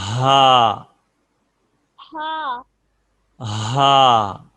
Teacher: اس کو سینے سے ادا کریں گے, جو سینے کا گلے کا نیچے والا حصہ ہے سینے کے قریب